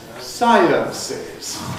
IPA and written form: ˈsaɪənsɪz (Sciences)